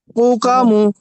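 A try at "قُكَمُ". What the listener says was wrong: কু টান টান হবে না।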